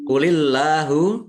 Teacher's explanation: Allahnya dibaca tipis. Karena harakat di depannya kasrah. Lam fathah berdiri mad thobii panjang dua harakat.